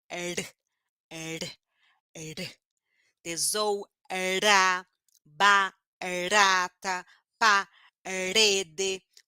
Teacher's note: como que eu produzo batendo a língua rapidinho no céu da boca